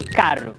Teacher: Falam um R seco com a língua atrás dos dentes tipo em carro